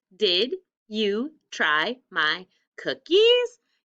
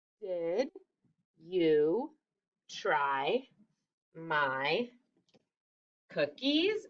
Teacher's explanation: hear my voice go up it's a question again i'm asking something